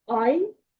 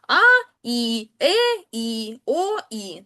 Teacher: Тобто тут ми бачимо, е, в першому випадку дифтонг. А якщо у нас впав наголос на букву і, дифтонг ламається. І ми маємо два склади.